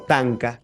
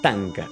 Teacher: es una oclusiva simple